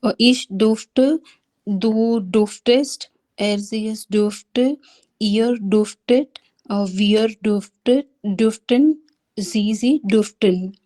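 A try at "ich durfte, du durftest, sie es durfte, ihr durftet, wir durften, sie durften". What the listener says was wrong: yeah, it's much better.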